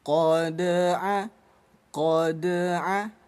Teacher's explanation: Qad, qad. Pantulannya jangan terlalu besar menjadi qad, sehingga ada putus jarak antara huruf dal dengan huruf ain. Jangan sampai ada jedanya, tetap tersambung. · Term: Dal sukun kita baca pantul